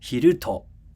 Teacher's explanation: 昼 goes up at first and then it comes back down with the particle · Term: high-pitch accent